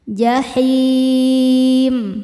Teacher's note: Maka h-nya panjang. Boleh dua atau empat atau enam harakat asal konsisten dalam satu kali baca. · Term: mad arid lukun